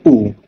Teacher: Langit lembut naik dan pita suara bergetar. Bibir kita ni dalam bentuk bundar ataupun lebih dikenali dalam bentuk bulat. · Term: vokal belakang sempit